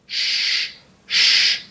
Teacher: En francés es más suave y va a sonar sh, sh, como cuando calles a alguien.